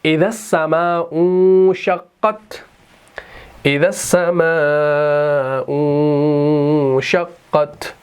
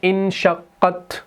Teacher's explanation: ہم اس حمزہ کو آگے نون کے ساتھ ملاتے ہیں، اس حمزہ کو نہیں پڑھتے کیونکہ حمزۃ الوصل ہے، لیکن جب ہم اس کو الگ سے پڑھیں گے تو ہم پڑھیں گے انشقت، ٹھیک؟